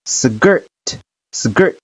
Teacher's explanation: 一定注意▁sk▁在单词中它有一个浊化 ▁，sk▁要读成▁sk▁的音▁，skirt。skirt，▁在后面的课程当中，我会陆陆续续的给大家说一下▁sk▁还有▁st▁他们的一些浊化。skirt，▁元音是▁r，▁前面的辅音是▁d▁的▁r。注意，耶在有其他元音在的情况下，并且在结尾，它要发▁e▁的音，前面的辅音是▁t▁连在一块读的▁dirty。好了，赶紧去练习吧。